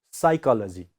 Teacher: So pa sound is silent here. We don't pronounce pa, only psychology.